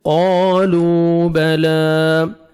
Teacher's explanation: في ضلال كبير قالوا، قاف کو موٹا کر کے پڑھیں گے، واو مدہ، لام کو 1 سیکنڈ آپ نے کھینچنا ہے